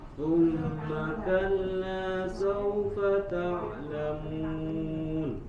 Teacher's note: lam bertasydid, tidak ditahan. Jangan thumma kalla kalla, tapi langsung thumma kalla.